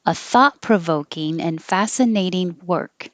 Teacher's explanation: you don't have to release the k at the end you can just hold your tongue in the k position